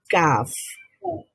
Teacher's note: জিহ্বার গোড়ায় মানে জিহ্বার গোড়ার ভাগ যখন আমাদের সফট প্যালেট থেকে একটু সামনে এসে হার্ট প্যালেট টাচ করে